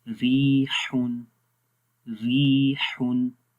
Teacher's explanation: جب را کے نیچے زیر ہوگی تو را کو باریک پڑھیں گے